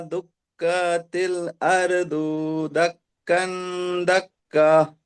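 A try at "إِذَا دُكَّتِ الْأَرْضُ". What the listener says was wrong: আরো দু, দু টান, টান হয়ে যাচ্ছে, টান হবে না, খেয়াল করবেন।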